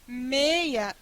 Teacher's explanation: Depois eu tenho uma semivogal. Como vogal é mais prolongada e semivogal menos prolongada, este ditongo ele é decrescente e fechado.